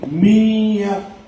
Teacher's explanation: تشدید والے حرف سے پہلے ساکن حرف پڑھا نہیں جاتا، اس لیے نون کو پڑھیں گے نہیں بلکہ میم کو یا سے ملا کر پڑھیں گے. میم کو یا سے ملا کر پڑھیں گے. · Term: ادغام